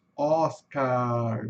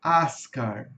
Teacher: No finalzinho no inglês é o chuá mais o rzinho pela metade